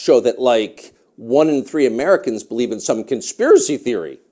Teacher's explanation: You'll notice the upspeak, the rising inflection at the end of the sentence